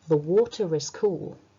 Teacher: the R will become pronounced in connected speech